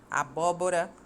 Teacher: quando a antepenúltima sílaba é mais forte é a tônica é uma proparoxítona